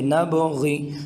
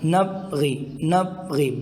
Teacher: با حروف قلقلہ میں سے ہیں، اس میں قلقلہ کر کے پڑھیں گے